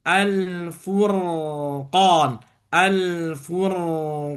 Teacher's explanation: sempurnakan domah di fa lalu ro tebal dan bibirnya dibalikin